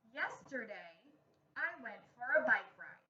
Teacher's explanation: did you hear my voice pause after the word yesterday that was a comma and did you hear my voice get lower and stop at the end